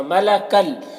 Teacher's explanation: تنوین کے بعد لام میں حروف یرملون میں سے، تو تنوین کو لام سے ملا کر بغیر غنہ کا پڑھیں گے، اس کو ادغام تام کہتے ہیں۔